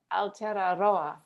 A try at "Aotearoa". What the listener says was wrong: I think you add a syllable. I think that's what's